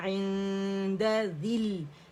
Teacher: یا ڈراپ ہو گیا اجتماع ساکنین ہے